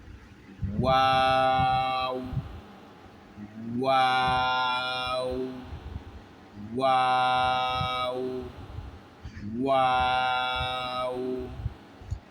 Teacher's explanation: আরবি মিমের পরে ওয়াও, আর ওয়াওরা উচ্চারণ হবে, মুখ প্রথম গোলাকার হবে, এরপরে একটু চড়া হবে।